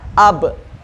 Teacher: Itulah hak ba. Hak ba dibaca dengan secara tertempelkan dua bibir.